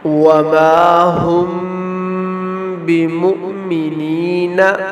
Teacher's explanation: اور دوسرا میم ساکن کا جو قاعدہ ہے وہ ہے اخفاء شفوی۔ میم ساکن کے بعد حرف با آ جائے تو میم ساکن میں اخفاء شفوی ہوگا، یہاں بھی غنہ ہوگا